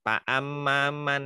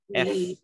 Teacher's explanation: tetap makhrajnya itu dilatih ujung gigi seri atas. F ya. Jadi yang menempelnya dengan bibir bawah. F-nya itu diperhatikan seperti itu.